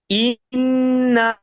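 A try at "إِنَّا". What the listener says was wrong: এই না টান দিচ্ছেন কেন ভাই, না টান দিয়ে যাবে না, হরকতের উচ্চারণ তাড়াতাড়ি পড়তে হয়।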